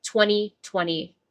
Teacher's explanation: I don't pronounce the t after the n in 20.